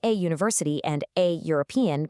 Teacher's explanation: even though they start with vowels on the page, they're actually pronounced with a hard consonant u sound